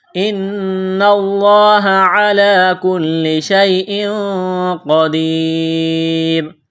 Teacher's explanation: نون مشدد پر غنہ کریں گے، آواز ناک میں چھپائیں گے، لفظ اللہ کے نام سے پہلے زبر ہے، لفظ اللہ کے نام کو موٹا کرنا ہے۔